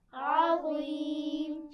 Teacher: عظیم میں دیکھیے عین باریک پڑھا جاتا ہے اور وا موٹا پڑھا جاتا ہے. عظیم پڑھیے، عظیم.